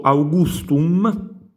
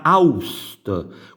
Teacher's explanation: Quindi vediamo come la G si perde, vedete, e diventa Aust. Frigidum diventa Frigdum, perdiamo la G e diventa Frid in napoletano. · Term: Sincope